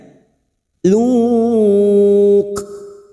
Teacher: Pada saat mewakafkan pada tanda qaf lam terdapat huruf kaf yang memiliki sifat hamas, maka bunyinya luk.